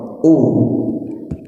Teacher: U-nya itu ya dua bibir itu monyong